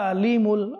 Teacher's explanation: দর্শক শ্রোতা আমরা খেয়াল করে এখানে কি রয়েছে আইন রয়েছে তো আইন এটা সুস্পষ্টভাবে চিকন ভাবে উচ্চারণ করতে হবে